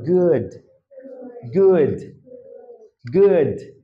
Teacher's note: আমার কিন্তু একটু বাতাস বের হয়ে যাচ্ছে লাস্টে।